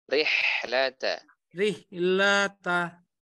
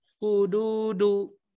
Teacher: Kalau huruf Ain itu sama huruf H itu rongganya agak sedikit menyempit. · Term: tengah tenggorokan